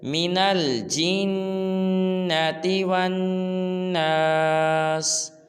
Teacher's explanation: جیم کو نون کے ساتھ ملائیں گے، نون پہ غنہ کریں گے